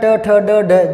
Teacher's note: जीभ अंदर से मुड़कर आती है मूर्धा से, मुंह का जो ऊपर का खोखला भाग है वो मूर्धा है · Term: मूर्धन्य वर्ण